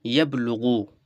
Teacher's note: তো এই জন্য কী করছি, সাকিনযুক্ত অক্ষর হওয়ার কারণে, বাটা সাকিনযুক্ত অক্ষর হওয়ার কারণে এই বাকে আমরা আগের অক্ষর ইয়ার সঙ্গে আমরা মিলিয়ে পড়তেছি